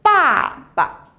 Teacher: It sounds like a slight fourth tone, like bàba. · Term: neutral